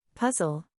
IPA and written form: ˈpʌz.əl (Puzzle)